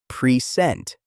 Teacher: If you stress the first syllable, present, it is a noun meaning a gift. If you stress the second syllable, present, it is a verb meaning to show something